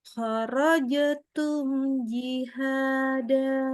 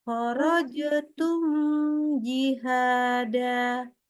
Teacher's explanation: tidak boleh baca mim sukunnya dibaca dengan ditahan, ditambahkan gunnah. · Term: idhar syafawi